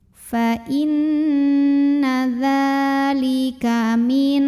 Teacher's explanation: Fa inna dza mad tabi'i karena ada baris fathah tegak di atas huruf dzal. Maka cara bacanya dipanjangkan dzalnya 2 harokat.